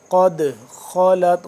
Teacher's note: دال ساکن ہے تو اس پہ ہم قلقلہ کریں گے۔ قد خالت، خا کا موٹا، خالت تا باریک، خالت لہا ما کسبت، کسبت وَلَكُمْ مَا كَسَبْتُمْ، وَلَكُمْ، کم یہاں پہ ہم کریں گے، میم مشدد آ گیا تو اس پہ ہم کیا کریں گے؟